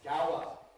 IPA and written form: ˈgɑʊə (Gower)